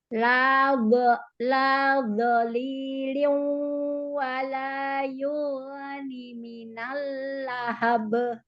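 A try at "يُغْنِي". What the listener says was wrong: Ni-nya ada mat. Ni-nya panjang 2 harokat ya. Lalu ghin-nya jangan terlalu lama rokhwahnya Bunda. Jangan terlalu lama. Jangan memantul.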